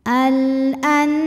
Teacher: Huruf ra dibunyikan secara tafkhim karena ra berharokat fathah. Cara membacanya adalah ditebalkan, pangkal lidah kita naik.